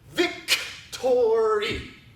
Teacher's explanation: so we make the r at the tip of the tongue coming up to the roof of the mouth